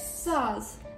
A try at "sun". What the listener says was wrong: Sun. Don't say sauce. It's sun. You gotta add the letter N. Sun. Sun.